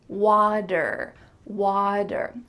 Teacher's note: the T is changing to a D this is typical in American English